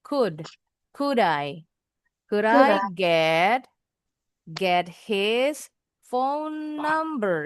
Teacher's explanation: L-nya enggak bunyi. O-nya enggak bunyi. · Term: L-nya silent